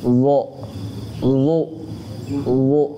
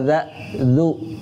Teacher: Kalau zo ada naik belakang lidahnya naik. Jadinya dia agak suaranya naik, namanya sifat isti'la.